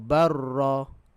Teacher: Kita masuk seolah-olah lam tu hilang. Okey, masukkan dalam ra. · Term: mutaqaribain